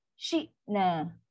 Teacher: Hamzah bukan huruf qalqalah. Dia syiddah, putus bunyi.